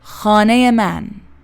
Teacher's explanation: All syllables have nearly equal length. This makes the Farsi sound calm, balanced, and continuous, not bouncy or choppy. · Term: syllable timed